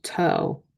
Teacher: this is an open syllable, which means the O is going to be long because there is nothing to close this O